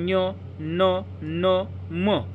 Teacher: यांचा उच्चार नाकातून होतो म्हणून त्याला अनुनासिक म्हणतात